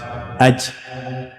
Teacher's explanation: whenever you find Jim with sukun, you need to make echoing sound. Vibrate. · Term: qalqala